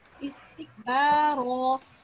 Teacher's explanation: You need to practice alif madda to give it... The alif needs to be given 2 seconds